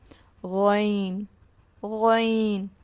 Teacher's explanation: غین کو ہم پر پڑھیں گے، مستعلیہ حرف ہے. غین جیسے کہ ہم نے خو پڑھا تھا حلق کے اوپر والے حصے سے ادا ہوگا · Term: حرف حلقی